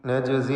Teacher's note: ജീമിൻ്റെ സുക്കൂനിനെ ഖൽഖല സുഗ്റ നൽകി ശബ്ദം ഹറക്കത്ത് പോലെ ചലിപ്പിക്കണം.